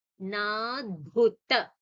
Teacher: Bhu is a mahaprana.